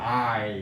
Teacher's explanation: 반모음이 뒤에 붙은 이중모음이었다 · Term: 하향 이중모음